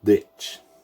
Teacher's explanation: In the Irish broad D pronunciation, you want to go off the teeth themselves.